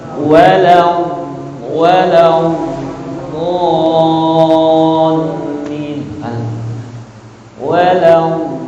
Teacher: Jadi ketika mengucapkan huruf dhad, ujung lidah kita itu dia nggak menempel gitu, dia hanya di pertengahan lah gitu, nggak menempel ke bawah, nggak menempel ke atas.